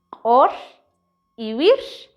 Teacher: ri r ensordecida